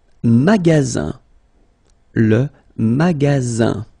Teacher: you've got only one S between two vowels. Then you get the sound Z, alright? And then the ending here is IN, so it's nasal, goes in your nose, and it's un.